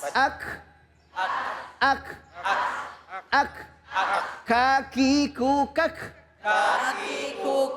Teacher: Nih di huruf kafnya ini kan ada hames ya. Ya sama dengan ta ada bunyi desisnya.